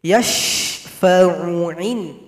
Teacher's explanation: Huruf shin, hati-hati, wajib tafasyi, suara yang menyembur